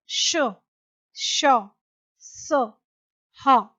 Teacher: जिन वर्णों के उच्चारण के समय हवा मुंह के विभिन्न भागों से टकराए और सांस में गर्मी पैदा कर दे, उन्हें ऊष्म व्यंजन कहते हैं। यानी जिन व्यंजनों का उच्चारण करते समय वायु विशेष घर्षण करती हुई या रगड़ती हुई बाहर निकले, जिससे गर्मी पैदा हो, उसे ऊष्म व्यंजन कहते हैं। इन व्यंजनों के उच्चारण के समय वायु मुख से रगड़ खाकर ऊष्मा यानी गर्मी पैदा करती है, यानी उच्चारण के समय मुख से गर्म हवा निकलती है।